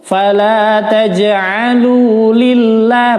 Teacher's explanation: Fala taj'alu lillah, maka dibacanya tipis, tarqiq, lamnya lamut tarqiq